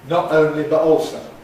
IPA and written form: ˈnɒʔ ˈəʊnli bəʔ ˈɔːlsəʊ (not only but also)